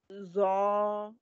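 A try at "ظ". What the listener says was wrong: Not za, not za, not za. Again, with your tongue between the teeth.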